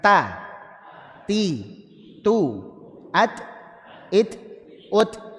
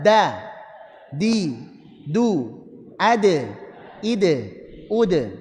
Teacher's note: Nempelnya kena gigi plus kena gusi sedikit, betul? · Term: Ujung lidah nempel sini